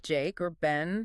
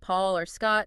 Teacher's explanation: Front vowels, like Jake or Ben, seemed gentler. Back vowels, like Paul or Scott, seemed maybe stronger.